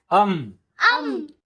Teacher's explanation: first is ಅನುಸ್ವಾರ which ಆಡ್ಸ್ ಎನಸಲ್ humming sound